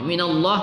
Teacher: kita baca tafkhim pada lamul jalalah karena diawali oleh huruf berbaris di atas